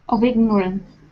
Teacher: But you can really hear the link here, of ignorance. And keep in mind that the F sounds like a V in this sentence